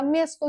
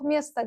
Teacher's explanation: Çünki o şəkilçisi vurğusuzdur. Ona görə mən orda mesto yox mesta deyirəm.